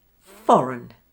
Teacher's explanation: Did you hear the schwa sound for the spelling of EIG?